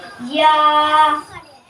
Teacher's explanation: یا زبان کے درمیان اور تالو کے درمیان سے ادا ہوتا ہے